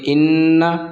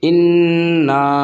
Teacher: یہاں پر نون کے اوپر گنہ ہوگا کیونکہ نون مشدد ہے